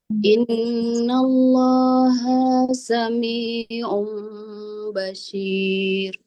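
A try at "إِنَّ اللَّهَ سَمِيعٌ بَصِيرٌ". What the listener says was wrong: Innallaha h-nya ha damirnya jangan dipanjang.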